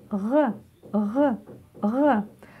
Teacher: А теперь букву «х» нужно сделать более звонкой.